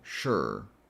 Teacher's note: And then what you do is you're going to take that SH sound, sh, and go straight at the R sound, just kind of like skipping the vowel